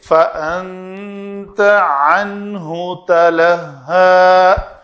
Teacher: عین کا جو مخرج ہے وہ وسط حلق ہے، اس کو ادا ہونا چاہیے۔